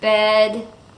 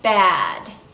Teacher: the vowel /Ɛ/ as in bed is similar because it's also a front vowel and it's like one step higher than /æ/ · the sound /Ɛ/ is with the mouth just a little more closed and then the sound /æ/ you have to lower your jaw a little bit more